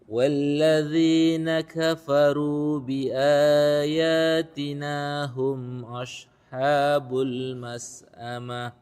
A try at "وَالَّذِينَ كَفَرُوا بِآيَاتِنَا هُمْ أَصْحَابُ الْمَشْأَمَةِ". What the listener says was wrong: Nah, ini kebalik. Asha di sini shad bukan shin, kemudian mash di sini shin. والذين كفروا بآياتنا هم أصحاب المشأمة. Ashabul mash'amah. Mash'amah. Mash'amah. Shin.